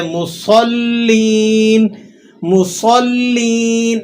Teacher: آپ نے اس کو صاد کو سیٹی اور موٹا کر کے ادا کرنا ہے